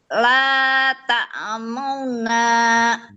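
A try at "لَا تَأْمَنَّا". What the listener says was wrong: Belum sempurna. La ta'man man. Tetap gunah nunnya tetap tidak dibuang.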